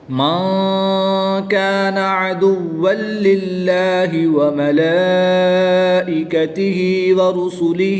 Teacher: نون ساکن کے بعد حرف اخفا میں سے کاف ہے تو یہاں پر اخفا ہوگا یعنی غنہ کر کے پڑھیں گے۔